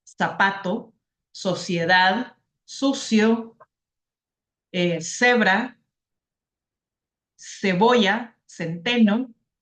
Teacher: en América los sonidos suaves de la C la s y la z no se pueden distinguir ya que tienen el sonido de la s